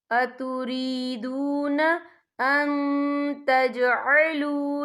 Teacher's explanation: من دون المؤمنین اتریدون ان تجعلوا، یا دیکھیں اتریدون ان، یہاں نون ساکن ہے، نون ساکن کے بعد جو ہے تا آ رہا ہے، اور تا جو ہے اکفا کا ورڈ ہے، تو ہم یہاں اکفا کریں گے، نون ساکن کی آواز کو ناک میں چھپائیں گے۔